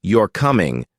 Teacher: But if you say, "You're coming," with a rising tone, it becomes a question, even though the words are the same